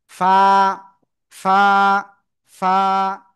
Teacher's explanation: নিচের ঠোঁটের পেট, উপরে দুই দাঁতের আগার সাথে লাগিয়ে হালকা বাতাস বের করে উচ্চারণ করতে হবে, আর এক লিপ টান হবে।